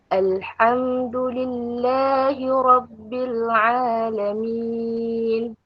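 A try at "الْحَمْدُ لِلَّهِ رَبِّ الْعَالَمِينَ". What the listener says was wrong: Okay, lillah lembut lagi. Lillahi Rabbil Alamin.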